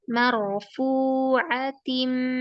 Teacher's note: fu-nya 2 harokat ya. Maknya tipis.